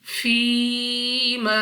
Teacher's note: اس کے بعد ہے یا ساکن سے پہلے زیر، تو یہاں پہ ہمارے پاس یا مدہ ہے۔ یا مدہ کو 2 سیکنڈ تک کھینچ کر پڑھتے ہیں